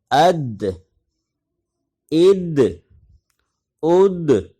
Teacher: دال میں جزم کے ساتھ قلقلہ ہوگا